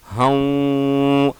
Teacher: ہاں ناک میں آواز جائے گی، ہو نہیں بولنا، ہوں